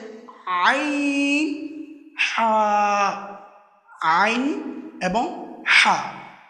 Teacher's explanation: হরফে হালাকিয়া তথা হলাক তথা কণ্ঠনালীর মধ্যাংশ থেকে যেগুলো উচ্চারিত হয়